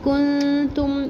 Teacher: کنتم نون ساکن پر اخفا کریں گے، اخفا ایک الف برابر کریں گے